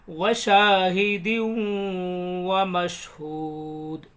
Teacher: دال کو واو میں ملا کے پڑھیں گے